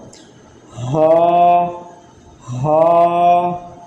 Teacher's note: یہ حلقے مخارج میں سے ہے، یہ حلق کے نچلے حصے سے ادا ہوگا